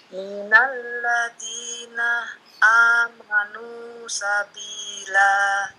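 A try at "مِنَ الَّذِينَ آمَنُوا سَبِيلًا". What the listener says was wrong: Ulangi, lancarin. Coba jangan dipotong. Minal ladina amanu langsung.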